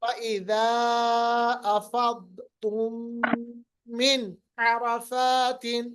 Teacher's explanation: نون کی آواز کو ظاہر کرنا ہے، چھپانا نہیں، ملانا نہیں. ظاہر کرنا، اظہار کرنا، یہ تب ہوتا ہے جب نون ساکن یا تنوین کے بعد حروف حلقی میں سے کوئی حرف آئے.